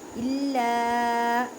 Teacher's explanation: ینعق بما لا یسمع الف سے پہلے زبر ہے یہاں پہ دونوں پر الف مدہ کا قاعدہ کریں. الا لام کو مضبوطی پہ کریں کیونکہ لام مشدد ہے